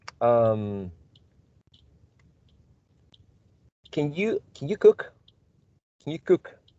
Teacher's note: a reduced form or a weak form, can, with a schwa, because it's a modal.